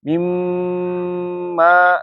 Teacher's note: ya jadi nunnya Jadinya ke mim ya atauah wauin jadi buna itu nunnya melebur ke huruf setelahnya